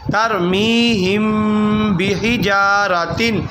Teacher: بحجارۃ، یہ ترمیہم، ہم کی جو میم ہے میم پہ جزم میم ساکن ہے، اس کے بعد با آ گیا تو با جب آ جائے وہ اخفاء شفوی کا قاعدہ ہوتا ہے تو یہ غنہ کیا جائے گا